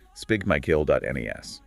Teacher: The pronunciation stresses the second syllable.